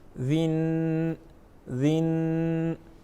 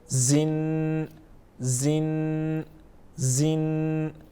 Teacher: ذال کو عموماً ہم نرم پڑھتے ہیں جبکہ زا کو ہم عموماً سخت پڑھتے ہیں